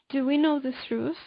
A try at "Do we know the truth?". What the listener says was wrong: Truth. You're saying truth. Truth, right? It's like there's a mistake in the first T.